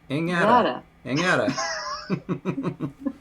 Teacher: notice I always add a G whenever I say it without it being at the end of a syllable